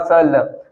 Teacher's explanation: दांत से थोड़ा ऊपर मसूड़े पे टच हो रहा है ना, इसलिए ये क्या हो गया हिंदी में, हिंदी भाषा में वत्स हो गया।